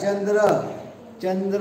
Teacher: चंद्र दाताला येत नाही, तालव्य फक्त